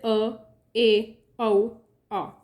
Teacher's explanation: अर्धविव्रत, अर्ध मतलब half open, जिन स्वरों के उच्चारण में मुख द्वार आधा खुलता है